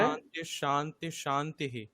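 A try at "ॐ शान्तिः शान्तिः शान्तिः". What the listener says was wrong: হ্যাঁ, ওই সকারটা আরো টাইম নিতে হবে। ওম শান্তি শান্তি শান্তিঃ বলুন। না না না, শান্তিশ। হ্যাঁ, ভাববেন যে ওখানে মাঝখানে এরকম রয়েছে, দন্তের নয় দয় লিখে তারপরে একটা তালব্য স্বর রয়েছে, এরকম ভেবে নেবেন, ঠিক আছে?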